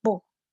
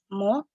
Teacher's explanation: Biep dan miem merupakan bunyi yang sunem atau bilabial yang berasal dari kedua bibir bertemu. Namun, perbedaannya adalah biep merupakan bunyi stop dan bunyi oral, sedangkan miem merupakan bunyi nasal